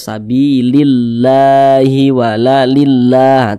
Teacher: sehingganya kalimat Allah ini dibaca tipis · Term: dibaca tarqikah